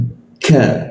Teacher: Lidahnya kita turunkan sehingga rongga udara terbuka. Ka, ada hembusan seperti itu.